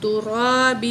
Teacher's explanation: را کو موٹا کریں گے، را کے اوپر زبر ہے